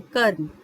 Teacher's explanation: आप कर्म अगर बोलेंगे तो आप उसमें देखेंगे जो रा का स्वर है वो काफी हल्का आ रहा है, कर्म। इसलिए जो रा है वो रेफ के रूप में मां के ऊपर लगाया गया है।